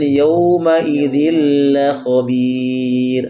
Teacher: Karena ro sukun atau disukun karena waqaf, sebelumnya ada ya sukun. Kalau ada ya sukun maka ro-nya ditipiskan. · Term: ro tarqiq